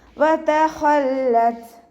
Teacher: താക്ക് സുക്കൂനാവുമ്പോൾ air pass ചെയ്യുന്ന സൗണ്ടിൽ നിർത്തി കൊടുക്കുക